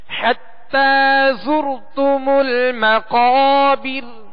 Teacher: زا کو سختی کے ساتھ پڑھنا ہے، سیٹی کی آواز میں پڑھنا ہے، اس کو نرمی کے ساتھ نہیں پڑھنا.